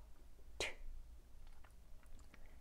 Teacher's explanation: 바람 소리랑 같이 나오는 트 소리가 나요. 혀끝을 치경에 반드시 대어야 합니다. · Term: 끝소리 T